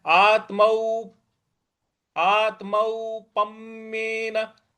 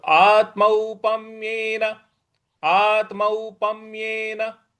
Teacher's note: पम्येन देखिए, प के बाद जो आधा म है उस पर भी हमको आघात देना है